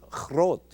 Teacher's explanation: groot in Dutch, where the G is softened to a guttural ch